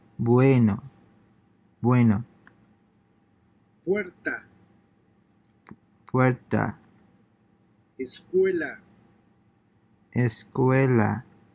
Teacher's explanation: combining the two vowels into a single syllable in the manner of the native speakers uh listen and repeat [Music] basically combine the oo sound from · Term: ue diphthong